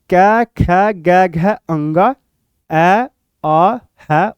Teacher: यह वर्ण हमारे कंठ से बोले जाते हैं।